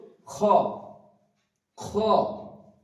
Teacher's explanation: হা একটা বাতাস বের হবে। খ উচ্চারণ হবে কন্ঠনাটির শুরুর দিক থেকে। · তারপরে আসছে হ্যাঁ, কণ্ঠনালীর মাঝখানে হইতে উচ্চারিত হবে হ্যাঁ, হ্যাঁ, একটা বাতাস বেরোবে। খ, খ, খ উচ্চারণ হবে কণ্ঠনালীর শুরুর দিক থেকে